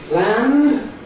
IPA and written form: plænd (planned)